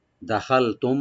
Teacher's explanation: দাল ওপেন থাকবে, খা এখানে একটু মোটা হবে, আর মিম সাকিন এখানে আমরা একফা সবই করব।